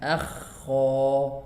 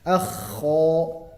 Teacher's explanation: Adapun untuk huruf kha dengan gha itu sama-sama keluar dari tenggorokan bagian atas ya.